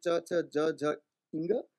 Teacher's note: produced by stopping or blocking a part of the oral cavity by touching the palate, the top of the mouth, with the front part of the tongue. And Panini's term for the place of articulation is ichuya shanang talu.